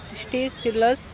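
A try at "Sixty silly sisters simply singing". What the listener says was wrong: సిల్లర్స్ కాదు. సిల్లీ సిల్లీ 60 సిల్లీ sister simply singing.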